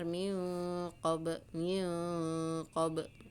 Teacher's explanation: Di sini hukum ikhfa ya. Nun sukun ketemu dengan qaf, samar ya. Diiringi dengan dengung-dengung, diiringi dengan samar.